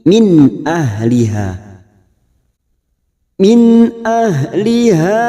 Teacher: nun sukun bertemu Hamzah namanya bacaan idhar halq kita baca jelas tanpa mendengung